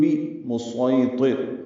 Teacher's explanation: بمسیطر پڑھیں گے، سوئی یا لین ہے، یا کو نرمی سے پڑھیں گے، تو پر پڑھیں گے اور را باریک پڑھیں گے وقفاً وصلاً۔